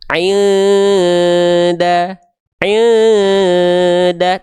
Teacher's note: Cara bacanya samarkan dan dengungkan ya 2 harokat. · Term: ikhfa hakiki